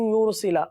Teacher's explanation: سلا کی لام کو کھینچیں گے نہیں